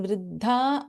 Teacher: so वी have in वृद्धा both अल्पप्राण द एंड महाप्राण ध